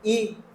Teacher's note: ई में अग्र संवृत और आवृत मुखी अग्र यानी मुह के आगे वाले भाग से जो बोले जाते